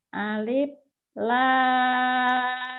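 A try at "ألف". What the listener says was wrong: ujungnya F, Fanta F. Jangan P, alif.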